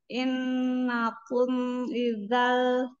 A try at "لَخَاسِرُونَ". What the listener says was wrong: Lala, lala. Lamnya tidak terbaca. Ketinggalan.